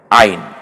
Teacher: একটু গলায় চাপ দিয়ে বলতে হবে আইন